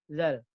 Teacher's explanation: Dan ingat, jangan kebanyakan desis kalau untuk huruf zal.